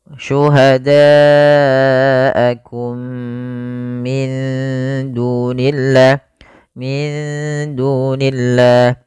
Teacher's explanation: mimnya dimasukkan kepada mim yang kedua dan ditahan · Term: Idgham Mimi